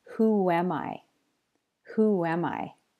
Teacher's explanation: sometimes a whoop sound is inserted between two vowel sounds at a word boundary this usually happens when the first word ends with an ooh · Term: intrusive whoop sound